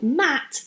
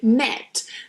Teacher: the sound is very open a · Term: a sound